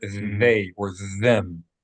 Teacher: When there is no dot, it makes a TH like in the word they or them. It's a voiced TH sound.